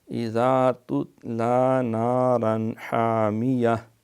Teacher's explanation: نارا تنوین کے بعد ہا جو ہے حروف حلقی کی ہے، لہٰذا یہاں اظہار ہے